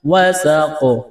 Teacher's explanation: وقف کریں گے تو قلقلہ کریں گے قاف پر